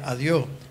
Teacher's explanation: terminando en s la s desaparece